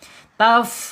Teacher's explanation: Nah itu muncul hamesnya mengalir. Taf ya mengalirnya. napas atau udara. · ujung gigi seri atasnya menyentuh perut bibir bagian bawah sehingga nanti akan muncul sifat hamesnya